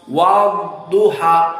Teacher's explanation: Tidak keluar. Maka wadduha tidak bocor seperti ta, kaf dari huruful hams.